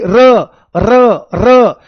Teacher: जब र का उच्चारण किया जाता है तो जीभ में बहुत ज्यादा कंपन होता है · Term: कंपनजात व्यंजन